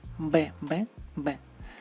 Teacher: El sonido siempre es bilabial, nunca labio dental, nunca B, B, B, B.